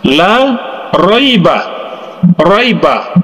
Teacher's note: karena huruf ra ini berbaris atas maka hukum atau cara membaca huruf ro ini adalah ditebalkan atau dalam ilmu tajwid dalam bahasa Arabnya disebut dengan tafkhim sekali